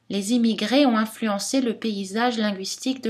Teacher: on trouve cette intonation qui descend à la fin des phrases déclaratives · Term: intonation descendante